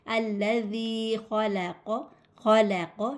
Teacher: اس کو ہم لوگ تھوڑا موٹا پڑھیں گے۔ الذی خلق، خلق، لام باریک ہے، خو موٹا ہے، قوف بھی موٹا ہے ، خلق، قوف لام میں ملے گا، خلقل، خلقل، خلقل، میم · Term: موٹا حروف